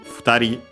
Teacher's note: two people, futari, the accent is on the ri. Also the u barely heard if at all of the fu, same reason, between a voice consonants.